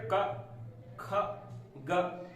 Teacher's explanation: जीभ के मूल भाग से मतलब पीछे वाले भाग से इनका उच्चारण हो रहा है, तो ये हो जाएंगे जिह्वा मूलीय।